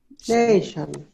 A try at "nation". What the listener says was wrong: Great, great.